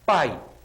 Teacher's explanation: o a esse som de a se escuta mais o i é fraquinho o i é um som fraquinho pai quase não se escuta